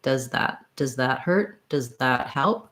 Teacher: if i'm saying does that my tongue tip is a little higher so that it's ready to go right between my teeth